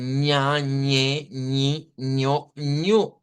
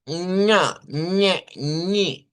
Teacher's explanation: la lengua se debe de posar sobre el palato y no sobre el albéolo. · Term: la eñe